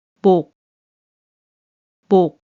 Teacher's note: This letter is pronounced as 복, 복, because Batchim makes only 기역 sound, and so shiot sound is omitted when it's pronounced